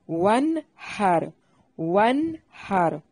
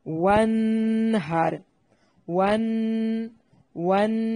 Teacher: واو کو ادا کرتے وقت ہونٹوں کو گول کرنا ہے، یہاں نون ساکن کا اظہار ہے، غنہ نہیں کرنا